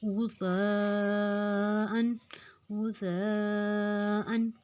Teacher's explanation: اب یہاں پہ غین کو ہم نے موٹا رکھنا ہے، غین پہ پیش ہے، لفظ کو غین کو موٹا کریں گے، تا کو ہم نرمی سے ادا کریں گے، اوپر اور نیچے کے دونوں دانتوں میں زبان کی نوک کو رکھ کے نرمی سے بغیر سیٹی کے ادا کرنا ہے